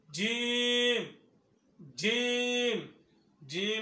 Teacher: জিম হরফ উচ্চারণ করার সময় জিহ্বার মাঝখান উপরে তালুর সঙ্গে লাগাইতে হবে।